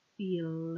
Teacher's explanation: the L is much more of the tongue reaching around the mouth it's almost touching all the way around my teeth when I make it after a vowel sound